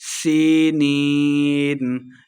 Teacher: سینین، یا مدہ ہے، 2 حرکات لمبا کرتے ہوئے پڑھیں گے